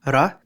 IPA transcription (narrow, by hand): ɾ